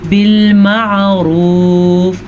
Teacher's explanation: आइन के मखरज को वाज़िया करें, अगर आप वाज़िया नहीं करेंगे तो यहाँ पे अलिफ बन जाएगा, यानी कि आप अगर पढ़ेंगे बिलमारूफ तो आपने अलिफ पढ़ा, आइन तो पढ़ा ही नहीं, तो लफ्ज़ कैसे नहीं गलत होगा, बिलमारूफ।